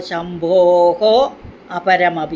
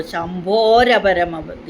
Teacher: രണ്ടായി ചൊല്ലുമ്പോൾ ശംഭോഹോ അപരമി എന്നും ഒന്നിച്ച് ചൊല്ലുമ്പോൾ ശംഭോരപരമതി എന്നും രാ വരും അവിടെ. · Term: വിസർഗം